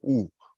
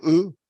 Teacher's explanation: cuando yo digo U, es redondeo los labios, ¿no? U. Pero cuando digo U, es así, los labios estirados.